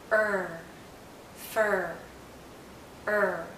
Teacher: in fur er fur er this is a very closed sound er is a high vowel so our mouth is very closed and our tongue is generally in a high position